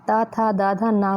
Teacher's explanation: ता, था, दा, धा, ना का उच्चारण स्थान दंत्य है।